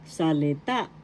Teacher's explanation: third syllable has the accent